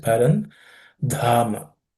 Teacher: The dha has to be aspirated. It's the fourth letter in the class of consonants.